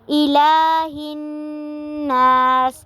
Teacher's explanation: الہ الناس پہ بھی نون مشدد ہے، غنہ بھی ہو رہا ہے اور ساتھ میں الف مدہ بھی ہو رہا ہے۔